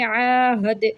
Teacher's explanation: دال پہ ساکن ہو جائے گا وقف میں تو اس کو ہم کلکلا کریں گے